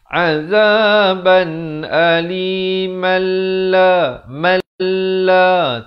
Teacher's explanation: Baca dengan hukum idgham bila gunnah, masuk tanpa dengung. Kerana tanwin bertemu lam, hukumnya idgham bila gunnah.